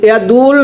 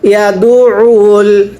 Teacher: এটা দুউল আইন চাপ দিয়ে পড়তে হবে